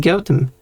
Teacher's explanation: this th here is not a th sound, because it is goat and home, gotham, because h's are often dropped in British pronunciations apparently.